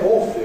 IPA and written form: ˈɔːfli (awfully)